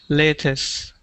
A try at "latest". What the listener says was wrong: So not latest, but latest with a T at the end. Make that T sound. Latest. Latest. Ta. Ta.